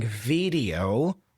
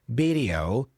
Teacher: instead of saying video with a V sound, pronounce video with a B sound